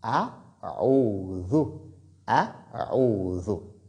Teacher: comme c'est la lettre Zal qui est venue après Waou, la prolongation reste de 2 mouvements